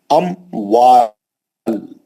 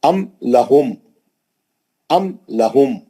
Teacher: मीम साकिन के बाद हरफ वाव आया इजहार के साथ पढ़ा जाएगा।